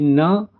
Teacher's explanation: दंतः plus नासिका से क्या बोला जा रहा है? न का उच्चारण हो रहा है